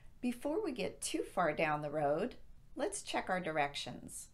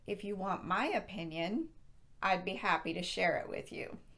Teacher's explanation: the road cannot stand on its own as a complete sentence so our intonation will rise at the comma to indicate more is coming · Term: rising intonation